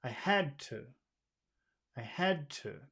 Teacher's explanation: you hear the short long short that's the Rhythm we have to find